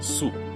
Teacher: most dialects of English, will use 2 vowels here. You'll say su, where Italian will consistently just use 1 pure U